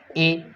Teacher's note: जीभ आगे वाले भाग में रहती है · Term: अग्रस्वर